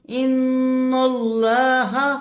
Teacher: ان اللہ ہا کی زبر کو کھینچنا نہیں ہے